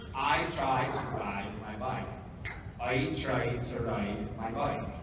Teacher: in Irish, the I sound turns from I to UH-EEE